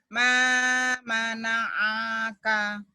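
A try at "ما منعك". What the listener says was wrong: Wow, pendek. Ma mana'aka. Justru di sini harus diangkat.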